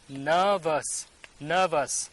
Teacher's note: R is not sounding here. That's why it sounds nervous.